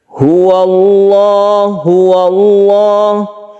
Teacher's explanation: Apabila lafadz Allah ini didahului dengan fathah, maka dia itu dibaca tafkhim atau tebal.